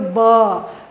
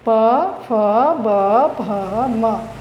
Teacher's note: दोनों ओष्ठ एक दूसरे से मिलता है